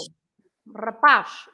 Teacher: the letter Z at the end, you stress also the last part of the word